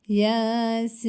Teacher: burada y harfinin üzerinde çeker geldiği için bir elif miktarı uzatılır Ama ince bir harftir e a arasında bir sesle uzatıyoruz